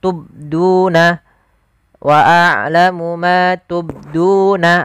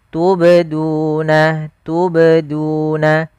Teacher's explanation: Yang tepat adalah dia huruf qalqalahnya memantul sambil mengalir. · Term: qalqalah sughra